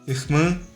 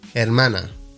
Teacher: Depending on the accent of the speaker, this word might sound completely different from the Spanish word, in particular the different R sound and the nasal vowel.